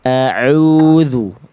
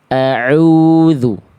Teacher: Ain itu dari tengah tenggorokan Bunda.